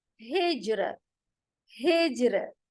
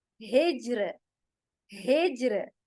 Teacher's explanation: तो यहाँ पर अब हम करेंगे क्या, रॉ तरकीक, कैसे, हिज्र, हिज्र। रॉ कहते हुए जबान हमारी खाली होगी, फ्लैट होगी, उसमें हम जबान को गोल नहीं करेंगे